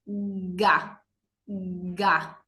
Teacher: O, por ejemplo, con la consonante ga, de gato, fíjense, ga. La ga es un sonido que se articula en la garganta.